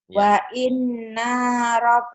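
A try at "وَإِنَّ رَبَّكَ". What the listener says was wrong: Wa in, nanya jangan dipanjang-panjang kan pendek. Wa inna rabb segera. Enggak ada yang panjang. Wa inna rabbaka huwa yahsyuruhum gitu. Wa inna rabbaka huwa yahsyuruhum. Wa inna rabbaka huwa yahsyuruhum.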